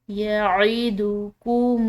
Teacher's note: العین، حلق سے ادا کریں گے